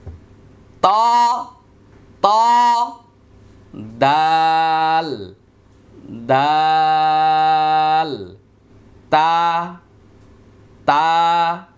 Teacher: জিহ্বার আগা সামনের উপরের 2 দাঁতের গোড়ার সঙ্গে লাগিয়ে 3টি হরফ উচ্চারিত হয়। জিহ্বাটা গোড়ার আগাটা এই 2 দাঁতের ভিতরে গোড়ায় লাগবে।